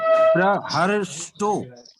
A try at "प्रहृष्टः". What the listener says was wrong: प्रहिष्टः, री। री है, र नहीं है। ये री की मात्रा है। जो र की मात्रा होती है, र में छोटी ई की मात्रा, दोनों का उच्चारण लगभग एक जैसा हो जाता है। हुरी जो होता है वो मूर्धा से होता है और वो जो होता है दांत से उच्चारण होता है र का। ऋतु रसाना मूर्धा, तो दोनों का उच्चारण स्थान जो है मूर्धा होने से एक जैसा स्वर सुनाई पड़ता है।